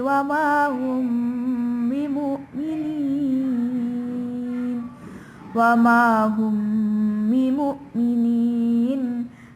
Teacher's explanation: Nah, ini adalah hukum bacaan ikhfa syafawi. Di mana cara membacanya adalah samar seakan-akan mau membaca huruf ba. Wa ma hum bimu'minin.